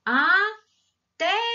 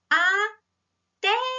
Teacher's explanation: A sílaba no té, ela é pronunciada mais forte e o som é aberto, ó. Até. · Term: Acento agudo